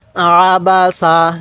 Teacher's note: আইনটাকে হামজা উচ্চারণ করবেন না আইনটা পড়ার সময় গলার মধ্যে চাপ দিলে আইনটা সহি উচ্চারণ করতে পারবেন